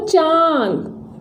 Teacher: जैसे आप लिखते हो चांद, चांद में आपके जो हवा है वो नाक से भी आ रही है और मुंह से भी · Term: अनुनासिक